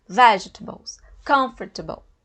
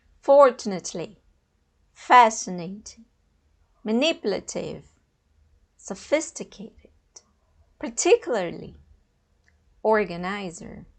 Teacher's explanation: A sílaba tônica, a sílaba forte, é no início. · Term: word stress